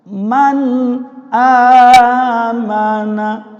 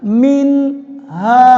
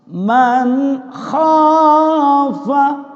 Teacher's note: Nah, izhar ini dinamakan izhar halqi, dibaca jelas di permukaan tenggorokan